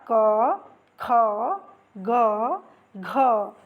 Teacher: इनका जो उच्चारण स्थान है वो क्या है? कंठ है। यानी गला है।